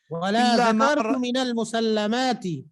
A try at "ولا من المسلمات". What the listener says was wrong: یہاں پر وہ لفظ ہے نہیں ولا ذکرت من المسلمات، یہاں صرف ولا من المسلمات الا ما رأيت القوم لم يتعرضوا له ولا